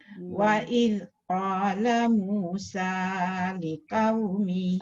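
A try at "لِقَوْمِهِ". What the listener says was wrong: Jaga qaf, jangan liqau. Wa idh qala Musa liqaumihi liqau.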